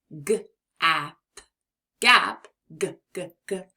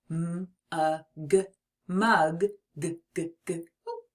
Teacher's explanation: that g sound it's bold and strong almost like a growl from the back of your throat to make the G sound the back of your tongue is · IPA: /g/